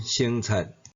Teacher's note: 第二声变做第一声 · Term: 变调音